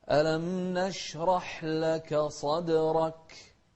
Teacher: شوف الصاد صدرك مع القلقلة في الدال.